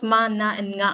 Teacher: All the nasals are voiced. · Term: nasal sounds